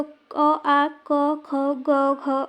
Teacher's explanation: और ये वर्ण है कंठ से अ आ, देखिए अ आ, क हलंत, ख हलंत, ग हलंत, घ हलंत, या फिर हलंत नहीं भी लगाएंगे तो अ आ, क ख, ग घ, अंग। इनको उच्चारण बोलते समय हमारे कंठ का उच्चारण होता है, इसलिए इन्हें कंठ्य वर्ण कहते हैं। जैसे बोल कर देखिए क ख, तो कंठ से उच्चारण हो रहा है ना इसका, तो इसे कंठ्य वर्ण कहते हैं।